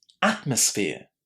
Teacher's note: Did you hear where atmosphere is stressed? It's the first syllable, isn't it?